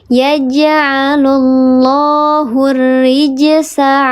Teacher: Bukan lam qamariah namanya lam syamsi karena ada tasydid namanya lam syamsiyah dibacanya dileburkan ke huruf ro yang bertasydid atau idgham syamsi